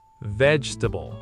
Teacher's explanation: Again, stress right at the front, and again, that middle syllable gets swallowed.